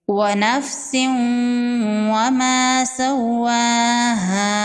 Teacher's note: واو پر تشدید ہے، واو کو ڈبل پڑھیں گے · تنوین کے بعد حروف یرملون میں سے واو ہے، یہاں پر ادغام ہوگا غنہ کے ساتھ